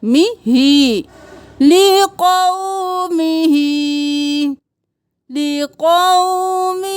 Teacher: ہا کھڑی زیر ہی یہاں پہ کھینچنا ہے ایک الف کے برابر